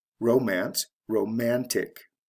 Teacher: And this is similar to the words above, where the CE is changed to T before adding the ending, romantic. So it goes from the first syllable to the second syllable in stress. CE to TIC. Romance, romantic.